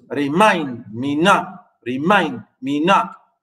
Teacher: unstressed syllable followed by a stressed syllable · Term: iamb